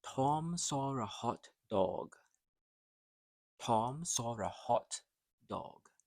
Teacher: This is the short open O, like hot dog. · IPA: /ɒ/